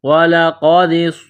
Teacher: قاف کو موٹا کرنا ہے، نقطوں والا قاف ہے۔